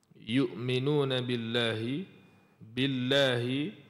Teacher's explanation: perkataan Allah sebelum dia baris bawah. Jadi kita baca nipislah perkataan Allah tu dibaca nipis.